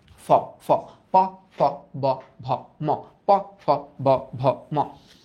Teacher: যখন উচ্চারণ করতেছি তখন উপরের ঠোঁট আর নিচের ঠোঁট ঠাস করে বাড়ি খাইতেছে, তার মানে এটা ওষ্ঠ।